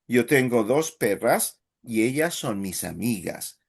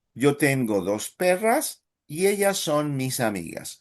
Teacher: we want to hear dos perras as main stress, mis amigas as second main stress